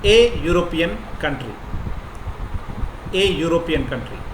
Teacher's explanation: it is ya sound, not e sound